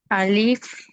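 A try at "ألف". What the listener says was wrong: అలీఫ్ అని దీర్ఘం తీయకూడదు, అలిఫ్.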